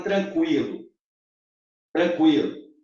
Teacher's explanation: Em tranquilo, veja que o U agora é fraco. Quem é forte é o I. Então eu tenho um ditongo, olha essa, crescente.